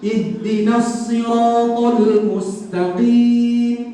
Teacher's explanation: Sad juga dia ada isti'la, kena macam tebal. Dia ada itbaq, kena suara berada di kerongga mulut.